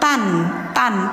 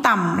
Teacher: Tapi idghamnya idgham bigunah memakai dengung teman-teman. Tanwin fathah menghadapi mim idgham bigunah.